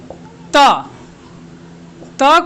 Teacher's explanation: त को हम दंत से बोल रहे हैं